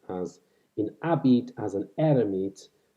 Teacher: This third line is, in fact, even more interesting because the alliteration here seems to be carried by the vowel, and it suggests that the H in words like habit and hermit were not, in fact, pronounced. So the alliterating element here is the vowel.